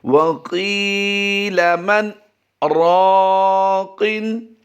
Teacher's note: سکتہ کی کیفیت ہم نے یہاں پر 1 سے 1.5 سیکنڈ رکھنی ہے · سکتہ کرتے ہوئے دوسرے لفظ یعنی راقن کو ہم نے پچھلے حرف کے لفظ کے ساتھ ملا دینا ہے۔ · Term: حالت سکتہ